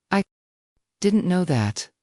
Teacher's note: said with a surprised tone rising slightly on didn't and no. It expresses genuine curiosity